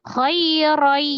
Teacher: Ya, jadi diidghamkan, ditasdidkan, dilebur ke huruf ya. Awalnya khairon jadi khairai. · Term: Idgham fi gunnah